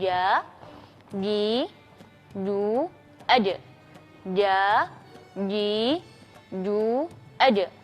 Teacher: huruf Jim ini keluarnya dari tengah-tengah lidah dan bagian dari langit-langit